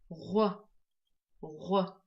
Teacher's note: Звук Г образуется от звука Г путем округления губ. Например, вот произнести звук Г, а когда теперь попробуйте произнося звук Г, округлить губы, и вы приблизитесь к произношению звука Г.